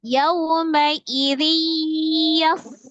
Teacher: Tanwin yang bertemu dengan huruf ya maka hukumnya adalah idgham bi ghunnah, ditasdidkan disertai dengan ghunnah.